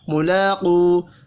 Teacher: ملاقو، لام کو کھڑی زبر کی وجہ سے ایک الف کے برابر کھینچ کر پڑھیں گے. قاف حروف مستعلیہ ہے، پر پڑھا جائے گا. واو مدہ کو ایک الف کے برابر کھینچ کر پڑھیں گے.